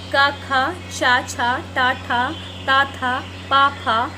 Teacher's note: अघोष वर्ण में क्या होता है? यह वर्ण में ध्वनि का कंपन नहीं होता है। इनकी संख्या 13 होती है।